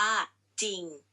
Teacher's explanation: แต่เวลาอ่านออกเสียงแค่จอในพยัญชนะตัวแรกเท่านั้น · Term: คำควบกล้ำไม่แท้